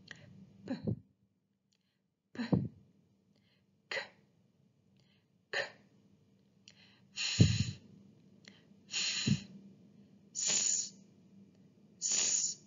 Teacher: When we pronounce voiceless sounds, we can notice that our vocal cords don't vibrate or even move. So these are called voiceless sounds.